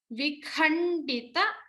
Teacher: stress on the mahaprana kha